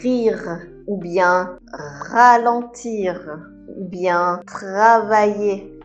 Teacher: Le R est un son que l'on roule au fond de la gorge et qui parfois pose problème, souvent aux anglophones.